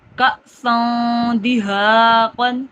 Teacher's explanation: حمزہ ساکن ہے، جھٹکا دے کے پڑھا